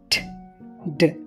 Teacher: వీటిని పలికేటప్పుడు నాలుక ఎలివేలర్ రిడ్జ్ ని టచ్ అవుతుంది